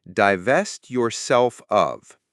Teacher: So for pronunciation divevest is dvevest with the stress on the second syllable and yourself of flows together. So divest yourself of.